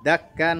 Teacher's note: Dakkan dakka ada fathatani bertemu dengan huruf dal, pembacanya adalah ikhfa hakiki.